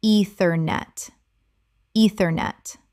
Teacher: Three syllables with the stress on the first. The e e is long.